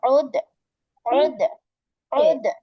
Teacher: আইন একটু কণ্ঠের মাঝখান থেকে নিয়ে আসো